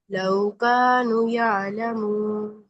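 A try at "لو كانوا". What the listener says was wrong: कानू, वाओ मद्दा पूरा करे ना, लौकानू। अलिफ मद्दा और फिर वाओ मद्दा दोनों एक जैसे लंबे होंगे। लौकानू यालमून।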